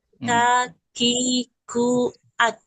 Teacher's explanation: Huruf kaf pangkal lidah keluar menempel ke langit-langit keras dan lunak, tapi lebih ke yang keras.